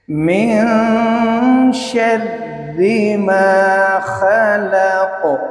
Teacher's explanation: اب آپ دیکھیے نون ساکن، قاعدہ یاد رکھیں کہ نون ساکن اور تنوین کے بعد اگر حروف اخفاء میں سے آ جائے، نون ساکن کے بعد حرف اخفاء شین ہے تو اس نون ساکن کی آواز کو چھپائیں گے، یعنی ہلکا غنہ کریں گے